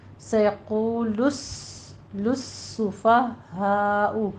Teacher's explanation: لام شمسیہ ہے یہاں پہ تو آپ نے مدغم کر کے سین کو پڑھنا ہے